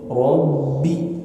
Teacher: Yang betul rob ada getaran. Ba itu ditahan bergetar.